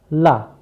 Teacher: क्योंकि जब हम ला का उच्चारण करते हैं तो ला को बोलते समय हमारी जिह्वा नीचे के दांत पर लड़ती है और जिह्वा के बगल से यानी पार्श्व से, पार्श्व का मतलब ही बगल होता है, जिह्वा के बगल से वायु निकलती है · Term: पार्श्विक वर्ण